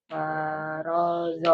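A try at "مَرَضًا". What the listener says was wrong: Ma-nya jangan ma itu panjang. Marodon, bukan zon, don.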